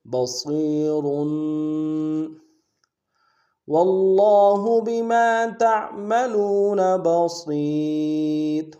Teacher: تعملون بما تعملون بصیر با کو نون سے ادا کریں گے، صاد کو موٹا ادا کرتے ہوئے یا کے ساتھ ملانا ہے، یا مدہ ایک الف دار میں کھینچیں گے، اور کے اوپر تنوین ہے غنہ کریں گے اور موٹا بھی کریں گے.